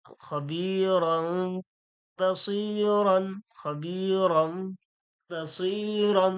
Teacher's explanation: তানবিন এবং নুন সাকিনের পরে যখন বা আসে তাহলে তখন এই তানবিন আর নুন সাকিনটাকে পড়া হয় না তখন মিম কে পড়া হয় মিম দিয়ে পরিবর্তন হয়ে যায় এটা থাকবে লেখা থাকবে